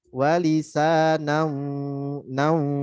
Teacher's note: Tanwin ketemu waw, ada idgham bigunnah. Digunakan, didengungkan.